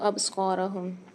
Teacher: یکاد البرق یخطف ابصارہم، یہاں پر ابصارہم میں دیکھیے با پر قلقلہ ہوگا کیونکہ اس میں آواز پلٹ کر آئے گی کیونکہ قلقلہ والا حرف ہے۔